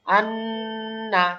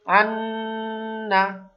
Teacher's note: নুন হচ্ছে জিহ্বার আগা উপরের তালু, হ্যাঁ উপরের তালু, মানে উপরের সামনে মাড়ির দাঁতের তালু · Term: নুনের গুণনাটা